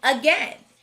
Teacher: two syllable words starting with a often have a schwa sound and that's what we hear in again the second syllable is tricky though the vowel team